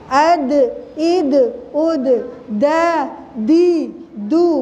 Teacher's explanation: Dal adalah ujung lidah ke akar gigi seri depan ya. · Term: huruf dal